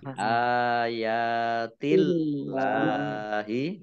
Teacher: Allahnya dibaca tipis karena harokat di depannya kasroh.